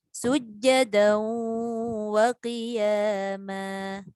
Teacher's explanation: Ma dibaca dengan istifal ataupun nipis.